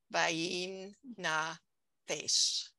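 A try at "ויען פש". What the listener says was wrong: Okay, except it's an ah there. Bayin na fash.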